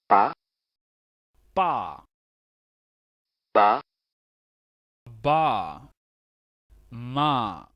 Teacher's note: And the labials formed with the lips make a slight plosive sound.